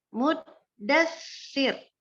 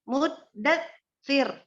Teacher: Jadi antara da itu kan ada masuk bunyi sa sukun ke pas baca si-nya itu harus ngalir terus udaranya. Jadi mudassir. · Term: sifat hams